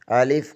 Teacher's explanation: الف منہ کے خالی حصے سے ادا ہوتا ہے